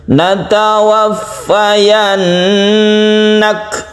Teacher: Suara kaf itu tidak qalqalah, tapi dia itu ketika kita sukun maka ada hembusan nafas ya, ada hembusan nafas sedikit kita ketika kita mensukun kaf. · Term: hamas